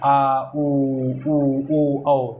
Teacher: पश्च भाग जीभ के पीछे वाले भाग से जिनका उच्चारण होता है, आ, उ, औ, ठीक है। तो ये आपके होते हैं, यानी पश्च भाग यानी पिछले भाग के जीभ के पीछे भाग से हो, ठीक है।